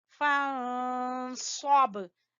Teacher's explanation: यहाँ पे इख्फा करेंगे और स्वाद को पुर पढ़ते हुए बा के ऊपर कलकला करेंगे